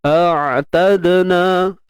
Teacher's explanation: Huruf ain kita sempitkan.